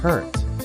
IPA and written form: ˈhɛəˌkʌt (haircut)